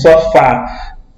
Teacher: Esse que fica inclinado para a direita chama-se acento agudo, indica que a vogal tônica possui timbre aberto